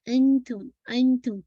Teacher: 4 to 5 count stretch करेंगे, एंथुम, ता के मखरज के पास आपकी जबान रहेगी, ता का मखरज, ता तो दाल का मखरज, आपकी जो सामने टिप ऑफ द टंग है, आपके गम लाइन से ना, जहाँ से आपकी टीथ अटैच है, बस वहीं पे लगेगी इंशाल्लाह। एंथुम, एंथुम, फौरन आपको आसानी मोटा नहीं कीजिएगा, ठीक है।